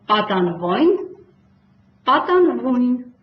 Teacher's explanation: վյուն ո յ եռաբարբառը պետք է արտասանել վույ և այդպես ցանկացած դեպքում բաղաձայնից առաջ